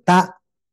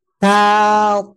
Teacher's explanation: Nah, kalau tak itu lurus, kalau to ngangkat.